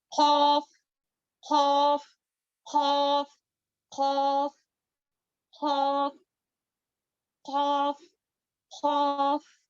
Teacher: زبان کی جڑ جو ہے اوپر کے نرم حصے پر ٹچ کرتی ہے, تب جا کر یہ مخرج ادا ہوتا ہے.